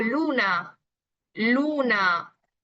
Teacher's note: la lengua que va tocando los alveolos, que son prácticamente la pequeña zona detrás de los dientes superiores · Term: alveolar